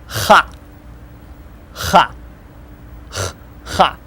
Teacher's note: Kind of rougher sounding than English H.